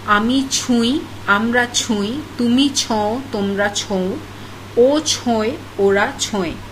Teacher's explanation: For example, in case of chonwa, the o in the root form changes to u in case of the first person conjugations.